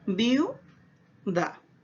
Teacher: Es decir, por tener ambas vocales la misma intensidad articulatoria, entonces el sonido se va a mantener en una sola línea, no va a aumentar ni a disminuir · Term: dictongo homogéneo